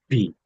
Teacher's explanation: বিটা হচ্ছে দুই ঠোঁট আছে না, আমার আপনার দুই ঠোঁট, দুই ঠোঁট বাজিয়ে তারপরে বি।